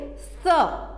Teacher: इसका उच्चारण करते समय जो हमारी जीभ है वो दांत से टकराएगी और इसको हम बोलेंगे स, बोलकर देखो स।